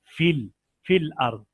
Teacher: فی یہ یا نہیں پڑھی جائے گی، الف بھی نہیں پڑھا جائے گا، یہ فا زیر لام فل فل ارض.